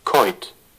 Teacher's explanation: coit, aspiration, and the vowel or the diphthong o is very short because we have a final T